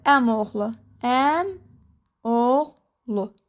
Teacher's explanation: Yəni birinci sözün son sayti i düşdü. Oğlu olduğu kimi də qaldı əmoğlu. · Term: son saiti i düşdü